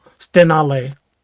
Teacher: He said it's stenale with kind of the emphasis on the middle syllable.